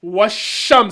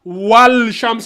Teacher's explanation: on ne lit pas le al, donc on colle directement.